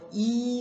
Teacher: 이 같은 경우는 전설 모음이면서 고모음입니다